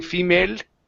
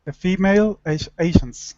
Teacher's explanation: when you're pronouncing this L, okay, you need to bring your tongue more forward in the mouth. If not, you're saying female, okay, and it's el, and your tongue is back further in your mouth.